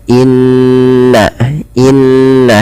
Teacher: ketika nun dan mim berharakat tasydid. Maka di sini ketika nun ada atau mim berharakat tasydid maka ditahan suaranya sepanjang dua harakat. Inna inna tidak langsung dilepaskan. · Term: gunah